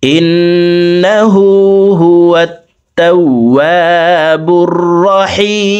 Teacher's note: হি এখানে 3 আলিফ টেনে মিমকে সাকিন করে ফেলবো, কারণ জেরের বাম পাশে জজমালাইয়া মদের হরফ, তো এই মদের হরফের বামের হরফে ওয়াকফ হইলে মদ্দা আরজি 3 আলিফ টানিয়া পড়িতে হয়।